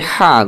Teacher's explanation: এই এক আলিফ টানের হা টা এটা উচ্চারণ করতে হবে হা গলার মধ্যে দাবিয়ে পড়তে হবে